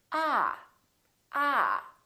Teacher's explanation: this vowel is usually longer than most people who are non-native speakers tend to make it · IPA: ɑ